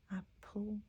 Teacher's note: I would argue that that's a syllabic L. Apple, because it has no vowel sound in between that.